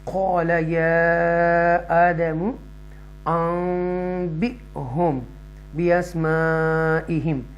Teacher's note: क़ाल या आदमु अंबिहुम बिअस्माइहिम, यहाँ पर थोड़ा ट्विच करेंगे, झटके से जर्क से पढ़ेंगे क्योंकि हमज़ा साकिन है